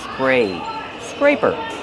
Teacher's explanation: Use a long A like day and say.